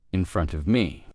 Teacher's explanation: drop the T at the end of front and you do unpronounce the vv sound at the end of of but drop that as well.